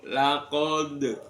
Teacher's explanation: di kalimah laqad di sana dalnya terletak di akhir akhir kalimah maka dibaca qolqalah kubro